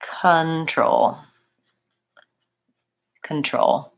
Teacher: So I don't say control or control. That O doesn't say O. It says the schwa. It sounds like control.